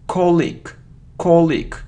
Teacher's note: so the stress is on the first syllable and we have the sound e